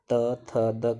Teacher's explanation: त थ द कहेंगे तो ऊपर वाले दांत से जीभ टच हो रही है, तो इसलिए इन्हें दंत वर्ण भी कहा जाता है।